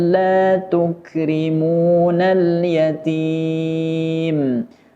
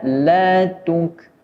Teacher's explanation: memiliki sifat hamas atau keluar sedikit nafas ketika mengucapkan huruf kaf berharokat sukun. La tuk akan salah kalau dibaca terlalu berlebihan.